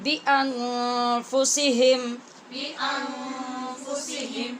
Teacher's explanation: نون پہ ہم نے اخفا کیا غنّے کے ساتھ